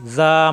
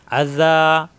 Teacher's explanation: মাদের হরফ এক আলিফ টান, জিব্বার আগে দাঁতের আগায়